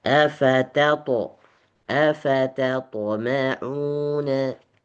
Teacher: ta dengan to harus dipisahkan, harus dibedakan. Ta huruf tipis, to huruf tebal.